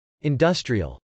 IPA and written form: .ɪndˈʌstriəl (industrial)